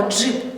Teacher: перший звук у нас не «д», а «дж», тому що вимовляється він злитно як один звук. Перший звук «дж», він в нас твердий приголосний.